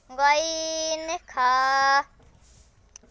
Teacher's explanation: ৩ নম্বর মাখরাজ, হলকের শেষ হইতে